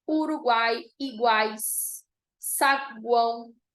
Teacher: encontro de semivogal vogal e semivogal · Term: tritongo